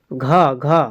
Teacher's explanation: घ का उच्चारण कहाँ से होता है? कंठ से होता है।